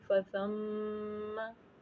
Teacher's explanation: غنہ کہتے ہیں ناک میں آواز کو چھپانے کو، تو ہم کیسے غنہ کریں گے؟ فَثَمَّ، میم کو ہم نے لمبا نہیں کرنا، اس کو ناک میں چھپانا ہے